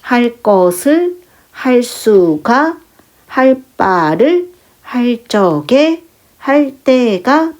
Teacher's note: 그래서 이 관형사형 어미가 오게 되면 리을이 오면 뒤에 있는 의존명사를 수식하면서 뒤에 있는 의존명사가 된소리로 발음이 되는 현상이에요.